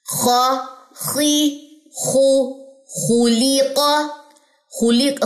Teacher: خا میں استعلاء کی صفت تو ہے لیکن انفتاح ہے ساتھ ساتھ